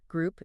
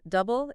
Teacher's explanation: group it's longer and your lips round double it's shorter